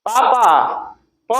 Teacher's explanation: उच्चारण करते समय आपके दोनों ओठ परस्पर चिपक रहे हैं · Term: ओष्ठ